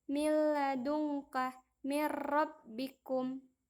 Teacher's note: cara bacanya nun sukun atau tanwin dileburkan pada huruf berikutnya tanpa mendengung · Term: idgham billaghunnah, idgham bila gunnah